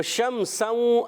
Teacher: شمسوں, اب شین آ گیا, یا اور شین کا مخرج ایک ہی تھا, جیم شین یا کا مخرج. تو اچھا شین میں ایک صفت پائی جاتی ہے, اس کو کہتے ہیں تفشی, یعنی منہ میں آواز پھیلتی ہے